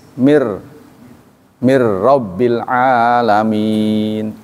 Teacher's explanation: Nun mati bertemu dengan ro, namanya itu idgham bila gunnah. Idgham tidak dengung, mir, jadi harus mir, bukan mir, nggak boleh.